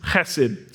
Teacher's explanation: It's Hesed. And the enunciation is on the first part of that word, not the second one